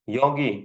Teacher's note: yo va i unlisini o'rtasida kelgani uchun g deb talaffuz qilyapman